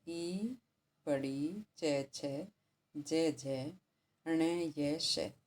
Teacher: आगे है ई, बड़ी, चे, छे, जय, जय, णे, ये, शे, ये बोले जाते हैं तालु से, तो इन्हें कहते हैं तालव्य